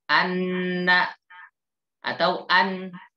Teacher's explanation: suara nun keluar dari ujung lidah ya, menempel pada bagian gusi atas. An, nggak mungkin dari bibir.